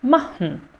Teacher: vocês nem vão falar mais esse E final.